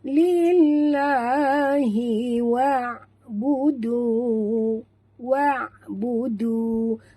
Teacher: Jangan baca wa, jangan tebalkan waw ni. Waw ni tak boleh tebal, dia huruf ringan ya. · lam pada lafzul jalalah dibaca tipis kerana lam ini berbaris di bawah